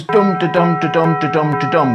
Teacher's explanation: The Dutch language's preferred rhythm is called trochaic. It goes dum to dum to dum to dum to dum with stress on every other syllable.